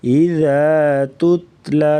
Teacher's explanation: اذا ذال جو ہوتا ہے اسے نرمی سے ادا کرتے ہیں۔ اذا تتلا تا کو باریک پڑھیں گے